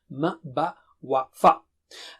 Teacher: Ma, Ba, Wa, Fa are from the lips.